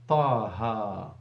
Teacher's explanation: And to be honest, even after the ha, you can hear the alif sound. Ta ha, the stretching of the ha.